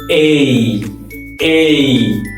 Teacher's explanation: এটাকে আমরা এ বলবো না, আমরা বলবো এই এই। তো এই একটু লং সাউন্ড